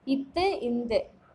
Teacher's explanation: மேல்வாய்ப்பல்லின் அடியை நாக்கின் நுனி பொருந்துவதால் பிறப்பவை